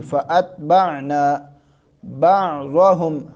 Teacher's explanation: حمزہ کو تا کے ساتھ ملانا ہے، لیکن یہاں تا کو قلقلہ نہ ہونے پائے